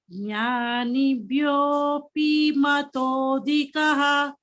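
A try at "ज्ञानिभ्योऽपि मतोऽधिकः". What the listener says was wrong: You are again elongating this. Jnanibhyopi. P only. It's not P. Dirgha is not there. Jnanebhyopi matodhikaha.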